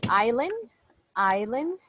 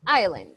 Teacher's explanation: in island, the S doesn't have a sound